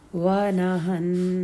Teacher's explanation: نون کو 2 حرکت ہولڈ کریں گے، پھر نفسا، سین کی حرکت سنگل